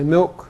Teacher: it only disappears where it would be dark dark L then becomes vocalized